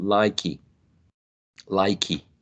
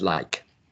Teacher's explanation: there is an elision of the last vowel sound. So it's not likey, likey, right?